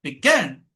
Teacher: অর্থাৎ সেকেন্ড সিলেবলে গিয়ে স্ট্রেস হবে